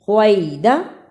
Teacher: خوات کو موٹا پڑھا جاتا ہے، اس کی جگہ پر سین نہیں پڑھ سکتے. خوات سین دونوں کی آواز میں فرق ہے نا، اس لیے خوات کو موٹا پڑھنا ہے.